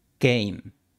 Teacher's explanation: La diferencia es que la k española no tiene aspiración, o sea, golpe de aire. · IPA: [kejm]